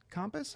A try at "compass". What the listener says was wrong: Compass. Compass. You're pronouncing the A. It's not wrong. Well, it's not wrong. It's just not how most people say it. Compass. CUMPAS. Compass. It's compass.